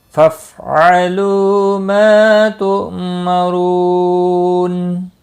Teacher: رو واو مدہ ہے، ایک الف کے برابر کھینچ کر پڑھیں گے اور نون وقف کی صورت میں نون ساکن پڑھا جائے گا، وقف بالاسکان ہوگا۔ مد العارض وقفی ہوگا، 3 سے 5 الف کے برابر کھینچ کر وقف کریں گے · فافعلوا لو واو مدہ ہے، ایک الف کے برابر کھینچ کر پڑھیں گے، فا ساکن کو ہلانا نہیں، حمزہ ساکن تھوڑا جھٹکے کے ساتھ ادا کیا جائے گا۔ ما الف مدہ ہے، ما تؤمرون، اس کو بھی ایک الف کے برابر کھینچ کر پڑھیں گے اور را پیش کی وجہ سے پر پڑھا جائے گا۔